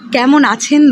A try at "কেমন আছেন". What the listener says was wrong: এই তো হয় তোমাদের মুশকিল, এই মটা আমি কানে গেল না। যদি উচ্চারণ করে থাকো ভালো, আর যদি না উচ্চারণ করে থাকো তাহলে কেমন আছেন হয়ে যাবে, কেন আছেন হয়ে যাবে।